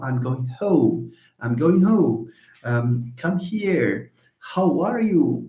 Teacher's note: H is a voiceless glottal fricative in English.